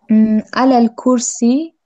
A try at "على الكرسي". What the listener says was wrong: Very good, but please pronounce the last vowel. So it should be على الكرسي.